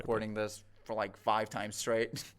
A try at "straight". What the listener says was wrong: Straight, but the vowel there is just a little off. I would expect to hear straight, but I'm kind of hearing like 8, 8, 8, but I want 8. Like for like 5 times straight, but so that's what I want here.